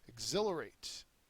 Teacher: Exhilarate is the next word and it's a verb second syllable is accented